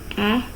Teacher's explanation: A can be described as a front unrounded vowel between open and half open.